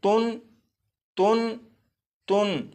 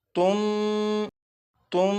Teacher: जैसे ये नून साकिन है, इसे इस तरह से नहीं पढ़ेंगे तुन तुन तुन, बल्कि नून साकिन को मीम से बदलेंगे और गुन्ना करके पढ़ेंगे। जैसे تم تم اور یہاں پر یہ جو چھوٹا سا میم ہے، یہ میم اس بات کی طرف توجہ دلانے کے لیے ہے کہ یہاں پر نون ساکن کو میم سے بدل کر غنہ کر کے پڑھیں گے۔